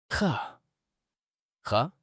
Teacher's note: Sound originates from the top of throat.